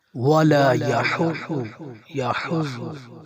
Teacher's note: حا کو باریک کیا جائے گا، ضاد موٹا حروف ہے، اسے موٹا پڑھا جائے گا۔ · حا باریک ہے اور حروف حلقی ہے، حلق سے ادا کیا جائے گا، اور ضاد موٹا حروف ہے۔